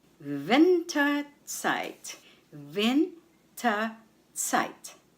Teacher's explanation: the stress is on VIN on the first syllable